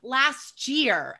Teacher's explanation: We're not going to say all those separate sounds. So it becomes last year, and it becomes like a CH sound almost.